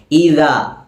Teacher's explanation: ദാലിൻ്റെ മഖ്റജ് നാവിൻ്റെ അറ്റവും മേലെ മുൻപല്ലിൻ്റെ അറ്റവും.